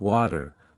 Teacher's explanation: The t between two vowels often sounds like a quick d. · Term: flap t sound